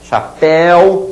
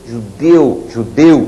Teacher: Chapéu, som estridente. Judeu, som abafado.